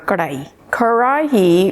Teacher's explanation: it's more like the middle of the tongue it then curls up and hits the top of the palette to make the r sound